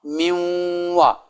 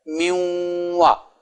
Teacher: نون صاف نہیں پڑھا جائے گا، نون کا غنہ صرف باقی رہے گا